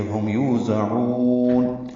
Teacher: یوزعون، یو وہ مدہ ہے، 2 حرکات لمبا کریں گے. زا کو تیز صفیر کی آواز سے ادا کریں گے، عین کو وسط حلق سے ادا کرتے ہوئے لمبا کریں گے اور نون ساکن پہ وقف کرتے ہوئے اظہار ہوگا اور یہ مد عادل سکون بنتی ہے.